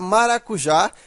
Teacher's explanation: porque que ela é acentuada por que ela é uma oxítona veja que a sílaba tônica é a última então é uma oxítona